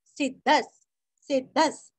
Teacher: विसर्ग का उच्चारण आधा स